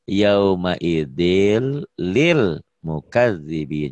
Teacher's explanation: idilnya tanwin ketemu lam. Jadi lamnya jadi double, jadi tiga.